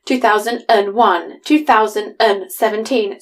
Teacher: I just add an extra syllable and go 2001, 2017. So I'm using the schwa sound.